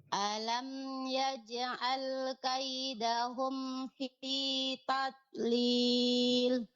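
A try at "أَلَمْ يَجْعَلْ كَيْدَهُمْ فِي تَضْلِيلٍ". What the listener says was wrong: Nah, tinggal lebih ditebalkan ya. Tadlil. Tadlil.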